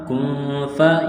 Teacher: نون ساکن کے بعد فا ہے، حروف اخفا ہے، غنہ کریں گے، آواز ناک میں چھپائیں گے ، کاف نون پیش، کن، فا زبر فا، کن فا، یا